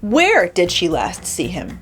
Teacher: if we stress the where the location matters most